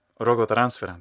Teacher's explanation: his final o also reduced in duration